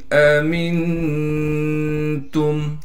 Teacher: حمزہ کو میم سے ملانا ہے بغیر غننے کے، پھر اس حمزہ کو صاف کر کے واضح طور پر نکالیں گے۔ میم کو نون سے ملائیں گے اخفا یعنی غنہ کے ساتھ۔